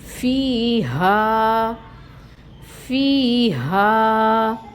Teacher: یائے مد ہو رہی ہے فی میں، اور ہا میں الف مد ہو رہی ہے، دونوں کو برابر رکھیں گے، دونوں کی مقدار 2 کاؤنٹس ہوگی